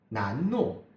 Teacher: N, as a nasal consonant, meaning air comes up through the nasal passages, and l as a lateral consonant, meaning the air escapes along the sides of the tongue.